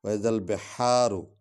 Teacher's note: یہ با حرف شفوی ہے، اس کو ہونٹوں سے ادا کرنا ہے، اور ہا کو جو ہے ہم نے وہ حلق سے ادا کرنا ہے۔